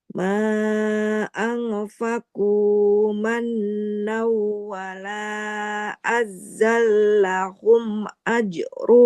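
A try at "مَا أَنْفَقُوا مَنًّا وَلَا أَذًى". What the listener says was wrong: Tidak azza. Nazalnya nggak bertasid ya. Tidak azza, tapi azallahum. mannaw, wala azallahu, ajruhum. Tidak azzah, tapi azallahum. Jadi zalnya nggak boleh kita tekan, karena di situ tidak ada tasydidnya.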